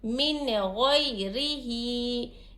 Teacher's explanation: नून साकिन के बाद वाला हर्फ यहाँ पर खो हुरूफ हल्के के 6 हुरूफ में से आ रहा है, तो यहाँ पर इजहार का क़ायदा होगा। नून की आवाज़ को हम ज़ाहिर करके पढ़ेंगे